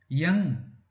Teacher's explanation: इसको ड का उच्चारण नहीं करना, ng का उच्चारण करना है, यानी कि इसको ये आवाज नाक से आएगी। जैसे एक बिंदी लगा देते हैं हम ऊपर, ठीक इसी तरीके से आपने इसकी आवाज निकालनी है।